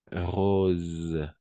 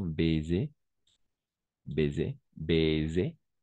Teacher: à chaque fois que le S se trouve entre deux voyelles on va prononcer comme un Z